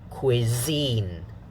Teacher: The second syllable is stronger.